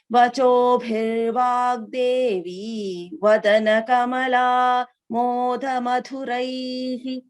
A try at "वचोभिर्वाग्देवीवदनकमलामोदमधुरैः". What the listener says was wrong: Last line, Bhagini, we should not split like that. Vachobhir vagdevi vadana kamala moda madhuraihi. Only that change, Bhagini, to chant continuously.